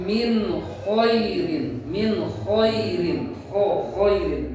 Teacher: menjelaskan bunyi huruf nun atau tanwin tanpa menahan lama gunnah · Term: idhar